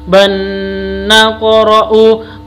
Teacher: Tunazzila alayna kitaban, na panjang, ta panjang, ban naqra'u, bacaan idgham bihunna harus dibaca dengung, tanwin bertemu dengan nun